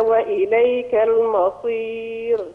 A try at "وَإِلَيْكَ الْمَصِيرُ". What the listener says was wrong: رقاق الميم شوية يا شيخ. وإليك المصير هكذا رقاق الميم تفضل. الميم. الميم.